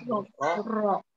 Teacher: Jadi huruf ro itu makronya ada di ujung lidah, ya, ada di ujung lidah. Ro. Dengan ciri-cirinya dia bisa tebal, bisa tipis.